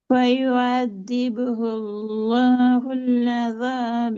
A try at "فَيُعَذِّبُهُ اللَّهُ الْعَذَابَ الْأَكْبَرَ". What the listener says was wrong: வரல. புல் அதாபல் இல்ல, இந்த லாமும் மைனும் மிக்ஸ் ஆகுது. فيعذبه الله அதான் அதாபல். அந்த டோன் பேல நான் பல இடங்களில் சொல்றேன். அதாபல் ஐயபதி உல்லாஹுல், அந்த சுக்கூன்ல ராகம் எடுக்கப்படாது, அதுக்கு ஏத்த மாதிரி எங்கட ஓதல மாத்தணும். فَيُعَذِّبُهُ اللَّهُ الْعَذَابَ الْأَكْبَرَ. அதாபல் அந்த டவுன் போகக்கூடாது.